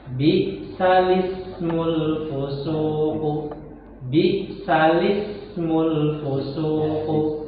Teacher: mengucapkan harokat hamzah pada huruf sebelumnya menjadi bi'salis